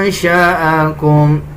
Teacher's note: نون پہ اخفا کیا جائے گا یعنی ناک سے آواز نکالی جائے گی